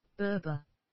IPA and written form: beəˈbeə (Berbere)